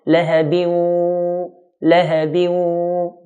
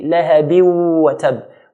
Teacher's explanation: What we're going to do is to cancel out the noon, so it will be lahabi instead of lahabin, and hold the waw with the nasalization sound. So lahabi plus hold the waw with the sound from the nose · cancel out the noon, so it will be lahabi instead of lahabin, and hold the waw with the nasalization sound. So lahabi plus hold the waw with the sound from the nose, lahabiu, lahabiu. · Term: idgham bi ghunna